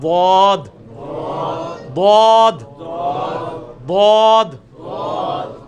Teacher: اس میں بھی جو آپ لیفٹ والے کو اگر اوپر کی دانتوں کی جڑ میں لگائیں نا, زبان کی لیفٹ والے کنارے کو اوپر کی دانتوں کی جڑ میں اس طرف, تو بہت آسانی سے نکلتا ہے ضاد